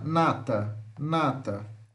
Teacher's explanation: nós temos o n nasal alveolar sonora